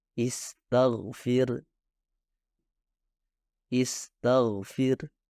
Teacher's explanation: Kesalahan terakhir dari ghain adalah mencampur suaranya dengan kha. Ketika huruf ghain dikelilingi oleh huruf-huruf lain yang dihasilkan tanpa getaran, beberapa pembelajar cenderung membuat ghain juga tak bergetar. Hasilnya akan terdengar lebih seperti kha daripada ghain.